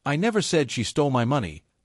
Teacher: For example, if you say, "I never said she stole my money," but stress the word never, it shows that you're denying the accusation entirely